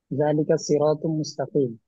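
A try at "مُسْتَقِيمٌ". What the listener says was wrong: ওয়াকফ করা যাবে না, ওয়াকফ করা যাবে না, শেষে সবসময় হরকত উচ্চারণ করতে হবে।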